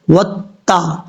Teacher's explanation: اس کا مخرج ہے زبان کی نوک اوپر والے دانتوں کی جڑوں سے لگے تو تا پڑھا جاتا ہے دو نقطوں والا، اور اس کو بریک پڑھنا ہے وتا، اس طریقے سے.